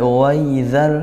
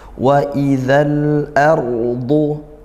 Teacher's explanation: Sempurnakan syiddahnya huruf hamzah